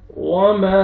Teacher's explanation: अलिफ मद है, अलिफ से पहले फतहा, मीम को आपने खींचना है, उन पर मद्दे जायज़ है, आपने 3 से 4 अलिफ के बराबर आपने मीम को खींचना है